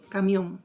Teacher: En la palabra camión, la mayor fuerza de voz está en la última sílaba. Por lo tanto, quedaría así, camión, ¿cierto? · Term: sílaba tónica